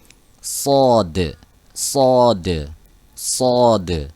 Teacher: kita ucapkan dengan tebal. Tebalnya bukan dengan memonyongkan bibir, tapi pangkal lidah kita, ya, punggung lidah bagian tengah ke belakang itu angkat ke atas, terangkat. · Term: huruf sod